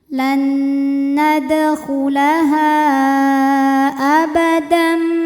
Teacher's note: Lan nadkhulaha Ha dihukumi dengan mad jaiz munfashil, karena mad thabi'i bertemu hamzah dalam dua kata, di mana mad thabi'inya adalah alif sebelumnya fathah pada kata nadkhulaha, sedangkan hamzahnya A pada kata abadam. Maka ha panjang boleh empat, boleh lima harakat. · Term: mad jaiz munfasil